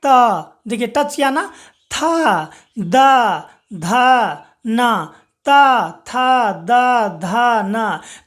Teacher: त, थ, द, ध, न, ये दांत के पीछे का हिस्सा को टच करता है, यानी कि दंत को टच करता है, इसीलिए हम लोग इसे दंत्य वर्ण कहेंगे।